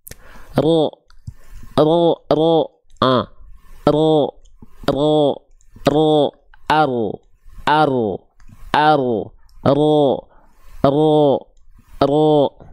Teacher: huruf ro itu dilafalkan dari bagian ujung lidah kita, cuman bukan ujungnya banget.